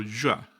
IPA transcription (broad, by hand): ʝʷ